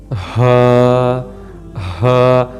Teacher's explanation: اور اسی طرح جو ہا ہے اس کی ادائیگی کی جگہ بھی ڈیفرنٹ ہے تو یہ حروف حلقی، لیکن حلق کی نچلی جگہ سے نکلتا ہے، یعنی کہ حلق کی جہاں سے چیسٹ سے تھوڑا سا اوپر والی جو جگہ ہوتی ہے، ہا ہا.